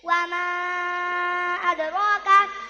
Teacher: Ra tafkhim sebab ra fathah.